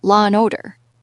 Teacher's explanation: There's also that funny thing British speakers do called the intrusive R, which is basically using an R to connect 2 schwas, like law and order.